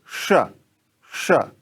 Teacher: अब उसके बाद जो दूसरा है, चूंकि इसको मूर्धन्य श बोलते हैं तो मतलब मूर्धा, दांत के पीछे जो एक उभरा हुआ हिस्सा है, आप जीभ से टच करके, छू करके, स्पर्श करके देख सकते हैं, तो वहां जीभ को रखिए और बोलिए श, श।